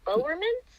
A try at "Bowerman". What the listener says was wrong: Bowerman, yeah. No S.